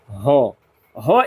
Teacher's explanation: ह एकमात्र ऐसा वर्ण है जिनका उच्चारण स्वर यंत्र यानी कि अली जीहवा से होता है